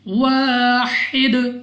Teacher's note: اگر آپ یہاں پہ وقف کرتے ہیں تو دال کو ساکن کر دینا ہے اور پڑھنا ہے واحد، دال پہ قلقلہ کر کے